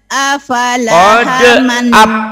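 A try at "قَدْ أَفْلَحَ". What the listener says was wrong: jangan apala. P-nya mati. Aflaha. Qad aflaha man zakkaha.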